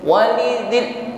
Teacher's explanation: lam sukun, tampakkan sifat tawasutnya, alirkan bunyi hurufnya, jangan putus ya